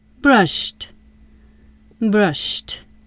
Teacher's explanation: Brushed equals brush plus ed. Brush ends with sh. Sh is voiceless. Ed says t. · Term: final t sound